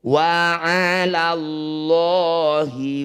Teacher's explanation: Kata ' Allah' atau lafzul jalalah. Jika didahului oleh 'fathah' harakat, maka harus dibaca ' tafkhim' atau tebal. Mari kita ubah 'la ' menjadi 'lo'.